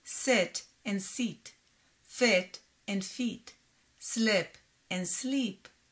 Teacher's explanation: in hebrew the words sit and seat fit and feet slip and sleep sound the same